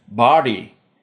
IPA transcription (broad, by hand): bɑː.ɽiː